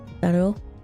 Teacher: The solid L then stops quickly at O. Oh, instead of like, so the timing is different.